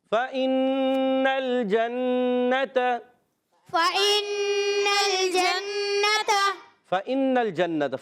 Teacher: نون مشدد، پھر ایک الف کا غنہ کرنا ہے، اور پھر دیکھیے نون کو لام سے ملانا ہے، لام کو ہلانا نہیں ہے. · فا ادا ہوگا اوپر والے دانتوں کے کنارے نیچے والے ہونٹ کے تر حصے سے